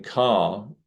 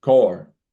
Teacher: The R doesn't go into a dropped R like the typical Southern romance, but or typical upper class Southern elite or anything like that. So car would rather than being car, simply becomes core.